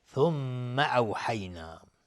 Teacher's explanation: میم مشدد 2 حرکت غنه میدیم